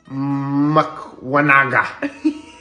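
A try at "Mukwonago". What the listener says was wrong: It's an O, not an A. It's Makanago. Makanago. Makanago. So the KW, I guess, is like a G.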